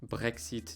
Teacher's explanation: just say it with a nice French R and a long I